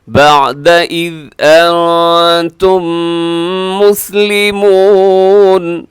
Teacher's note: انتم نون ساکن ہے تو اس کے بعد تا ہے، تو یہاں بھی کیا کریں گے، اخفا کریں گے. اور انتم مسلمون، یہاں میم ساکن کے بعد میم ہے تو یہاں ادغام شفیع ہوگا، یہاں بھی آپ کیا کریں گے، آواز کو ناک میں لے جائیں گے.